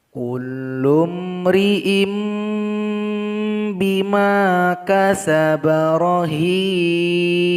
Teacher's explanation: Kemudian di sini ada mim iklab. In menjadi im.